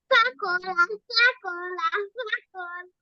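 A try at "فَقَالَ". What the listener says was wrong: ফটা একটু টান দিতে হবে না? ফটা তো আলিফ মাদ। কলা। হ্যাঁ, তারপরে এটা। না, কফের পরে কি আছে এটা?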